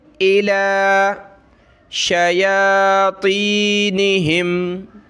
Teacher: لام کو ایک الف کی لمٹ میں کھینچیں گے